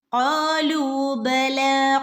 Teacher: ഖാഫ് തൊണ്ടയുടെ മുകൾ ഭാഗത്തു നിന്ന് വരുന്ന ലെറ്ററാണ്